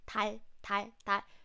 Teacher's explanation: When this 디귿 sound comes at the beginning of the word, it sounds like T. It's similar to T. But again, we don't really use lots of air. We have less air when you pronounce this 달, 달, 달 sound.